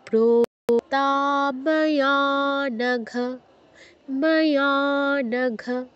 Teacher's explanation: ঘ বলেই ছেড়ে দিচ্ছি। মায়া নঘ বলে ধরে রাখছি না কিন্তু।